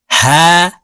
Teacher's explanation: হলকের শুরু থেকে উচ্চারণ হবে